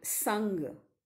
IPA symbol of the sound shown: n